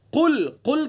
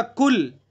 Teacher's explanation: قاف کو جو مخرج ہے قاف کا، اگر وہاں سے نہیں ادا کریں گے تو یہ چھوٹا کاف بن جائے گا